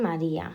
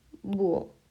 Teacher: dos vocales van juntas, pero van separadas en diferente sílaba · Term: hiato